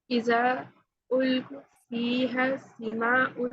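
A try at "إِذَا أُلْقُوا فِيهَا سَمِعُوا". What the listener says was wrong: مد ہے، اذا پہ مد ہے، القو واو مدہ جو ہم پڑھ چکے ہیں، فیہا الف مدہ، سمعو واو مدہ، لہا الف مدہ، یہاں سارے مدہ آ رہے ہیں، دھیان سے دیکھیں۔ اب اس کو ایسے پڑھیں گے، اذا القوا فیہا، سب کو لمبا کرنا ہے، سمعو لہا، ٹھیک ہے۔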